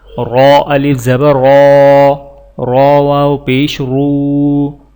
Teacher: یہاں پر را کے اوپر زبر ہے اور یہاں پر را کے اوپر پیش ہے، تو لہٰذا ان دونوں را کو موٹا پڑھا جائے گا